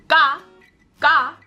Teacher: you feel really no form of vibrations you don't really hit you don't even feel the air come on your mouth no air really leaves your mouth when you hear that gah gah sound